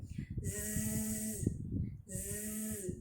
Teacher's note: nafasnya tidak kerasa di kulit, tapi suaranya tetap mengalir. Zzz, zzz, ngalir ya. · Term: Rokhwah